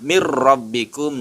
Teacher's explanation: Idgham dimasukkan huruf nun mati ini menjadi hilang suaranya menjadi ra, tasydid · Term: idgham bila gunnah